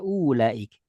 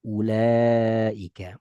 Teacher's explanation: Berarti wawunya nggak boleh dianggap ada. Ketika waw kita anggap nggak ada, maka u-nya jadi pendek. Kecuali waw kita anggap ada, maka dibaca ulaik. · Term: u-nya pendek